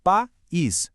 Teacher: Em país, o A é uma vogal forte e o I, por ser tônico, também se comporta como uma vogal forte. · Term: iato